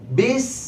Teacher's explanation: با کو سین سے ملائیں گے اور سین سیٹے والے حروف میں سے ہے، سیٹی کسی آواز آئے گی